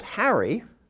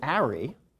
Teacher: Italian doesn't have the initial sound H